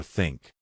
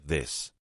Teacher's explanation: Put your tongue between your teeth. Push air out for think. Add voice for this. Practice in front of a mirror until it feels natural.